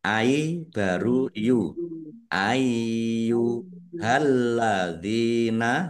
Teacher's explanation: Ynya ada tasdidnya dibaca dobel dibaca ai dulu ya. Ai baru yu